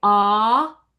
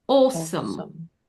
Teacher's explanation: They don't say ah so much like we do. There's almost always a lip rounding slightly. So because of that, it changes the space and so the jaw doesn't drop quite as much. · But with this accent, that ah sound it tends to have a rounding. They don't say ah so much like we do. There's almost always a lip rounding slightly.